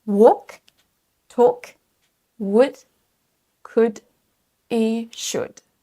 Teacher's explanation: Tous ces mots sont piégeurs parce qu'ils ont un L silencieux. On ne dit pas walk, talk, would, could et should.